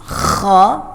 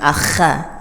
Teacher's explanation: Bunyinya tebal, ya. Bunyi tebal itu bunyi vokalnya O. Ya, jadi jangan akha, ya.